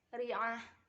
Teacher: Terdapat huruf ro yang dibaca tarqiq atau tipis karena dia berharokat kasroh.